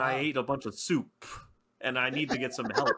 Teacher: It's like a bonus like poof at the end. It's not a pop on the mic. He just like extends the P a bunch.